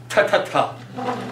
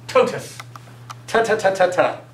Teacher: Never, ever with a Z sound. T, a dental sound, meaning we use our teeth and tongue